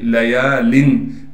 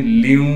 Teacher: لام کا ہم بالکل ادغام کر دیں گے واو کے اندر یعنی تنوین کو ختم کر کے